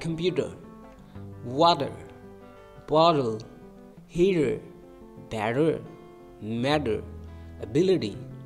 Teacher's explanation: it becomes like a soft D or flap t a flap which means the tongue touches the roof of the mouth quickly